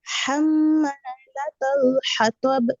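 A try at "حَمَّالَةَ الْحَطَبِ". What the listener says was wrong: তাটা একটু মোটা হয়ে যায়। হাম্মালাতাল লাতাল হাম্মালাতাল হাতাব।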